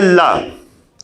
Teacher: ला का उच्चारण करने में जिह्वा के दोनों बगल से हल्की सी हवा पास होती है। पार्श्व का मतलब होता है बगल, तो इसीलिए ला को हम क्या कहते हैं, पार्श्विक कहते हैं।